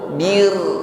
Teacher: ra sukun di sini kita baca tarqiqnya, ringan saja getarannya, karena sebelum ra sukun ada baris bawah, ya, ada kasrah.